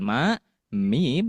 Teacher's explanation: Di antara tertahannya suara dan mengalirnya suara. Atau ketika kita melafalkan ma, mim, yaitu sedikit ada aliran suara, tetapi ada juga yang tertahan. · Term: tawasud